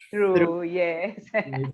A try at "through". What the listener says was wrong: Yeah, TH sound. Through. Your tongue is a mirror, is among your teeth. Through. Through. there's a little bit of air. Through.